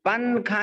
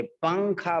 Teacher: نون کو سائلنٹ کر کے ناک میں لے جاتے، اسی کو کہتے ہیں ناک میں آواز کو چھپانا.